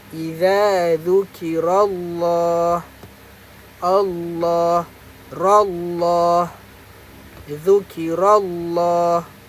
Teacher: Kerana tak boleh baca secara nipis. Kita kena baca secara tebal kerana sebelum Allah ada huruf atas. Ada huruf berbaris atas. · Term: lam tafkhim